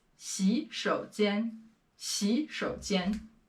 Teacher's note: 洗 and 手, they both have a third tone. So for the first character, it's to be changed into a second tone here.